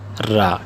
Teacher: जुबान की नोक और मुकाबल के तालू से यानी जहां पर नोक है जुबान की उसी जगह पर आप